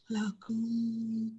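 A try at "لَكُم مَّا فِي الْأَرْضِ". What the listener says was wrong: Bunyi mimnya. Lakum ma fil ardi. Jadi jangan terlalu cepat. Lakum ma beda. Jadi huruf mim mim sukun ketemu mim itu harus didengungkan sama dengan ketika nun sukun ketemu wau, nun sukun ketemu mim, itu dengungnya sama ya. Lakum ma fil ardi.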